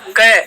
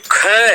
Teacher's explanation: कि हाथ सामने रख कर के आप उच्चारण करो क तो क बोलोगे तो वायु का निकास कम होगा एक बोलो बोलोगे ख तो ख जहां होगा वायु का निकास ज्यादा हो रहा है तो वह महाप्राण है